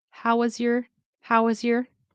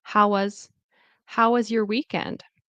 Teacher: Do you notice how the how collides in with was because you have the consonant.